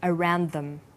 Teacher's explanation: This type of linking is called consonant and similar consonant linking. You'll notice that around is stressed, but them is unstressed.